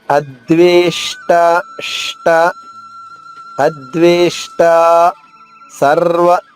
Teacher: షా అనేది ఉషాలో పలికే షా, దీన్ని మూర్ధన్య షా అంటారు సంస్కృతంలో